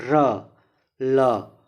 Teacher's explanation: र और ल का उच्चारण स्थान वत्सर्य